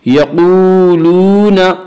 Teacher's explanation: یقولون واو مدہ وہ واو جو ساکن ہے اس سے پہلے پیشو واو مدہ کو ایک الف کے برابر کھینچ کر پڑھیں گے